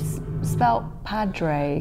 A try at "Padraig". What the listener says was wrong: It's Padraig. You don't pronounce the D. Basically, it's Padraig. You can pronounce the D or not, as you wish, and then some Morain.